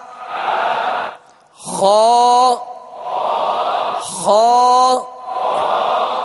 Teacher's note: خا کو پر پڑھیں گے اس لیے کہ ماشاءاللہ حروف مستعلیہ میں سے ہے